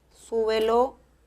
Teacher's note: súbelo lleva el acento en la primera sílaba